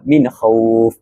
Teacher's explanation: Min khauf ini perlu dibaca tanpa dengung. Dan izhar halki ini berlaku apabila huruf nun sukun bertemu dengan a kha iaitu salah satu daripada huruf izah halqi dan perlu dibaca tanpa dengung.